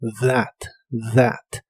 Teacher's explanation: La TH de esta palabra se pronuncia como una D vibrante.